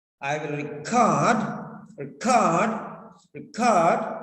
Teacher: so stress is on cord